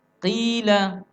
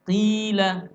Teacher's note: Qaf sambung dengan ya sukun bacanya qila. Dipanjangkan 2 harakat.